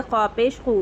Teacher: ख़ौ को पुर पढ़ेंगे, हुर्फ़ मुस्तालिया में से है और पेश की आवाज़ आगे को जाती है।